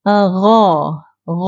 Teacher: g g okey gha Ni kita tak perlu nak KH hembus gha ni kita hanya bunyinya macam kita mendatarkan saja bunyinya kita tak perlu hembus kalau Kha ni kita kena hembus supaya dapat bunyi Kha tu